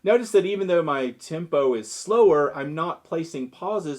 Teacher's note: I'm just slowing down how I speak the words by stretching out each syllable. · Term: vocal tempo